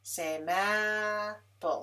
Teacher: Lips come together for both of those sounds, the same apple. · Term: bilabial sounds